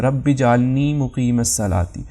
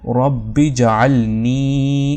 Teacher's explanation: اب دوسری غلطی کیا کرتے ہیں لوگ کہ یہاں پر اس یا مدہ ہے، تو نون کے بعد جو یا مدہ ہے تو نون کو جلدی سے پڑھتے ہیں